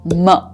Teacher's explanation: the final consonant that we reach at both of our lips is m, with both the lips coming together